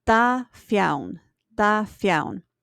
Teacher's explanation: the word for 2 is causing lenition. That doesn't mean it gets lenited itself. It means that the word following it gets lenited.